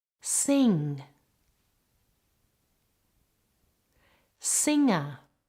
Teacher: the tongue comes up at the back